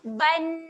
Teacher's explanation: Okay, jadi dibunyikan nyata dan dibunyikan jelas. Bunyikan tanwinnya secara jelas. Jadi ba tanwin baris atas bunyi ban. Tidak ada bunyi dengung. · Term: tanwin selari